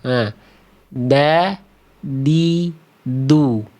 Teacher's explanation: Jadi ujung lidahnya ke sini ya. Oke, ujung lidahnya ke pangkal gigi seri atas, bukan ke langit-langit, bukan juga melet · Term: huruf dal